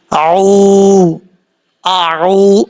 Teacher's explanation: آئین ہے، آئین کے بعد واو ہے، آئین کو اپنے مخرج سے نکالنا ہے، آگے واو مدہ ہے، ایک الف کی مقدار لمبا کر کے پڑھنا ہے